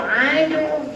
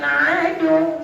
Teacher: Mimma kana fi wa qulna Muncul adu. Tekan waw tu ada syaddah. Bila ada syaddah dia macam dua huruf.